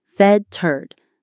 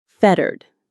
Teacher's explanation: The stress is right at the beginning.